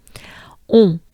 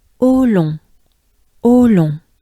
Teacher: So it's a closed mouth and it goes into your nose. On. But it starts with O. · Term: Pretty nasally